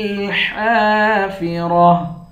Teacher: حا کے بعد الف ہے، الف حروف مدہ ہے، ایک الف کی مقدار کھینچیں گے، را کو موٹا پڑھیں گے